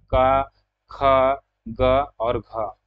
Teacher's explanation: क वर्ग के जितने भी ध्वनि हैं, जितने भी वर्ण हैं, क ख ग और घ, उसका उच्चारण जो है कंठ से होता है।